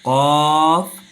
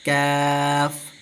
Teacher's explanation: اس کو پر پڑھیں گے، قاف، اور اس کو باریک پڑھیں گے